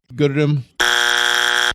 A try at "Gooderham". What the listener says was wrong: There's no D in the second part.